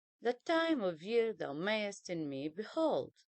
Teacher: If we have iambic pentameter, it means we have 5 iambs, and that means 10 syllables, unstressed followed by stressed.